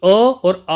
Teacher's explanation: जो अ और आ स्वर है इसका उच्चारण स्थान जो है कंठ्य माना जाता है